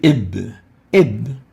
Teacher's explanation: the ba articulates by bringing the two lips together, closing the two lips. And that's why with the ba is considered to be a bilabial letter.